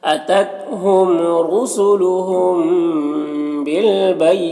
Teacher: را کو پر پیش ہے، را کو پر پڑھیں گے